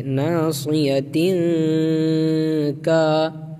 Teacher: کے بعد حروف اخفا کے 15 حروف میں سے کاف ہے، تو نون کی آواز کو ناک میں چھپائیں گے